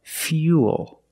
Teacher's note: Fuel, not fuel, but fuel. We have the same long ooh sound after the y. So, it's u plus the dark l. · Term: y sound